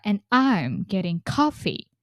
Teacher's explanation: here we put stress on I'm. Why? We call that as contrastive stress, especially because we are comparing ourselves with everyone, like comparing I and everyone I know.